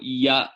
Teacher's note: it's a palatal semi-vowel in Sanskrit